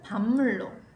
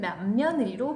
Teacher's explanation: 비읍이 미음으로, 기억이 이응으로, 디귿이 니은으로 바뀌었네요. 자, 그렇다면 아까 말했던 미음과 이응과 니은은 비음이죠. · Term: 비음화